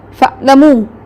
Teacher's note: اگر آپ عین کی ادائیگی جو ہے وہ سختی سے کریں تو یہ تو حمزہ بن جاتا ہے